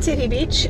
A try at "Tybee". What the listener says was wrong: Sounds like you're saying Titty Beach. Enunciate it.